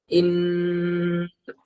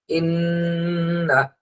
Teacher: এই যে ইন বলে যে আমরা ধরে রাখলাম, হ্যাঁ, উচ্চারণটা যে অবস্থায় ছিল সেই অবস্থা আমরা ধরে রাখলাম, ইন, এই ধরে রাখাটা হলো গুন্না